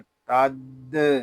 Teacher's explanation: تا دال زبر تد، یہاں دال مشدد ہے، اس کو جماؤ کے ساتھ ادا کریں گے